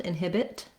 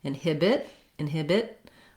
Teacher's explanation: by themselves with no release of air for example inhibit inhibit i just go up to make the t but i don't let any air out